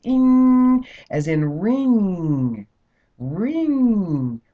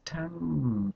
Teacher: it's the tongue pushes that sound up so it comes out through the through the nasal passages